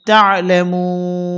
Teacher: অক্ফের সময় নুন সাকিন হবে আর এখানে টানতে হবে তিন আলিফ